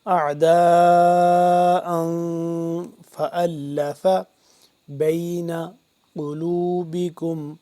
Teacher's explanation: یہ مد لمبا ہوتی ہے، حمزہ دو زبر ان، تنوین ہے، تنوین پہ ہم کیا کریں گے، اخفا کریں گے، اس کو بھی آواز ناک کے اندر لے جا کر پڑھیں گے